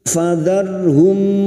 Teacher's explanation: mim sukun dibaca jelas tanpa mendengung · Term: idhar syafawi